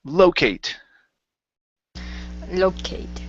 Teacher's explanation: so the stress is at the beginning